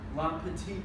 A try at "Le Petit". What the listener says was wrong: Le Petit. You said la, it's French, not Mexican.